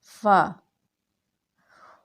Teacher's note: غین، غین، حلق کے اس حصہ سے ادا کیا جاتا ہے جو منہ کی طرف ہے، یعنی منہ کی طرف کا جو حصہ ہے وہ حصہ غین کی ادائیگی میں استعمال ہوگا۔ فا، اوپر کے سامنے والے دو دانتوں کو نچلے ہونٹوں پر لگانے سے فا کی ادائیگی ہوتی ہے